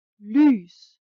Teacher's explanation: what you need to do is to keep a steady e sound and then round your lips